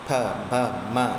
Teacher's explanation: Bilabial means two lips joined together and make sound pa, ba, ma